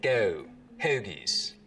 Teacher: Now, another thing that starts to happen as we get down towards Philly is that the goat diphthong starts to move forwards in the mouth